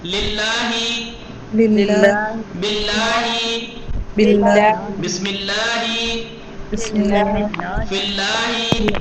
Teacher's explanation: لام کی ترقیق کی مثال دیکھیے آپ, باریک نازک اور کم حجم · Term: ترقیق لام